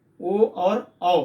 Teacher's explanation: ये दो वर्ण हैं, ओ और औ। कंठ से बोले जाते हैं और ओठ की आकृति, ओष्ठ की आकृति बदल जा रही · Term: कंठोष्ठम